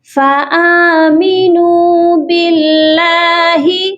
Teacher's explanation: اللہ کے لام کو باریک پڑھا جائے گا، کیونکہ اللہ کے لام سے پہلے اگر زیر ہو تو لام کو باریک پڑھتے ہیں۔